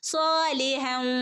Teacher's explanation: ശ്രദ്ധിക്കുട്ടോ തൻവീനി ശേഷം വരുയാണെങ്കിൽ മണിച്ചുകൂട്ടി ചേർത്ത് ഓതണേ ഇബ ഓക്കേ സ്വാലിഹവ ഇവിടെ ലാമിന്റെ കൂടെ അലിഫ് മദ്് വന്നിട്ടുണ്ട് രണ്ടനക്കം നീട്ടി കൊടുക്കണംട്ടോ